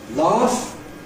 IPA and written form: lɑːf (laugh)